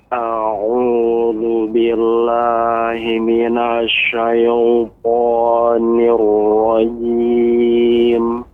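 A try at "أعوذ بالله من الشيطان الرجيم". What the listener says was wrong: Koreksiannya syaita ya, dia pengucapan suaranya tidak dengan memunyungkan bibir. Syaito, bukan syaito tapi syaita. Syaita dengan syaito. Yang keliru syaito dengan memunyungkan bibir.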